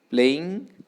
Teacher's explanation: the syllable which receives stress is the first syllable